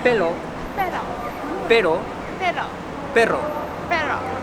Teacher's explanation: La próxima vez que escuches a un japonés tratando de pronunciar la doble R, la R o la L, entiende de que ellos están pronunciándolo con el fonema japonés R que ellos tienen, que es muy diferente a la L y a la R que nosotros conocemos